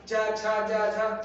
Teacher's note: च वर्ग च छ ज झ तालू से हो गया